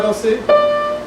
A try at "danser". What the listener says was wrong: Even a little bit more close, danser. Yeah, danser. Yeah, but here you open, you danser. You open at the back, you have a diphthong. Danser.